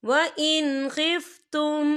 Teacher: ये देखिए, व इन, यहाँ नून साकिन है, नून साकिन के बाद जो है खा आ रहा है, और खा जो है हरूफ हल्की का वर्ड है, तो हम यहाँ इजहार करेंगे और हम इसे बिना गुन्ने के पढ़ेंगे